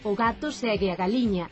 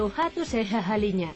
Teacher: Pero se pola contra é da franxa occidental, a súa pronuncia será ben distinta, e dirá que o gato segue a galiña. Esta aspiración do G de gato, segue e galiña é o que se coñece co nome de geada